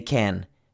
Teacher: the can is stressed so we don't say kun we say can